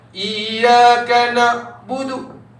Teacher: Huruf Ain ni ringkasnya kena alirkan suara separuh bang. Tak boleh stop. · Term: sifat pertengahan